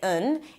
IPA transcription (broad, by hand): ən